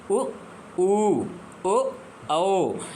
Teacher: वृत मुखी स्वर जहां पर बोलने में मुंह कैसा हो जाता है गोल गोल हो जाता है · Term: वृत्तमुखी स्वर